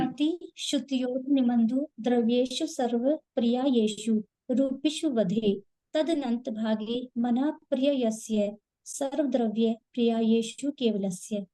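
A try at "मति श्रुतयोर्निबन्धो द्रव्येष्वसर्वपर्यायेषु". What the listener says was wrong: हाँ, बहुत अच्छा।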